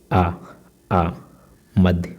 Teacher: मध्य स्वर में जैसे आ, मध्य भाग उठता है, जो है जिह्वा का जो है मध्य भाग उठता है आ बोलने पे